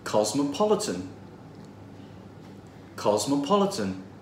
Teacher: it has four syllables and the third one is stressed